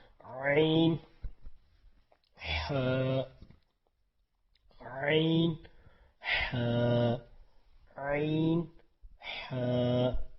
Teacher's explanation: یہ وسطی حلق یعنی کہ حلق کے درمیان سے, میڈل آف تھروٹ, درمیان کے گلے کے درمیان سے پڑھنا ہے. عین, فنگر, اپنی فنگر, فرسٹ فنگر جو ہوتی ہے, جو تشہد والی فنگر ہوتی ہے, اس سے ہم شہادت والی فنگر کو ہم درمیان پہ حلق کے رکھیں گے.